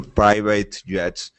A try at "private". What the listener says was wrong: Don't say private, because 8, remember, we only say 8 at the end of verbs, like to estimate and appreciate, but otherwise we say more ert.